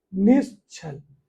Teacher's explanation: तो ये देखो हो गया निश्चल, नि धन छल, विसर्ग हट जाएगी और हमारा तालव्य सा आ जाएगा